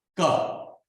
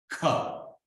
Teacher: That ka is hard and is called non-aspirate. Why? Non-aspirate because you are not adding the h or h to it. Look at K-A, ka.